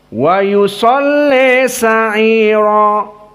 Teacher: Maka Al-Kisai sama dibaca seperti qiraah Warsh, namun bedanya al-imalah al-kubra. Maka dibaca dengan imalah al-kubra seperti Warsh dengan dhammatil ya dan fathatis shad.